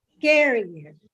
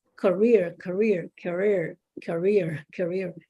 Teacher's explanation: It's not career, it's career. So the stress is in the second syllable, rear, not care, year.